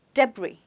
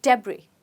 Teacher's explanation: We don't say the S, we say debris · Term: silent letter